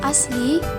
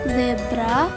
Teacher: Fonem S dan Z ini masuk ke dalam bunyi lamino alveolar.